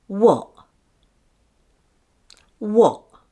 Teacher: Instead of pronouncing the T sound, the air is blocked after saying what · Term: glottal stop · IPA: wɒʔ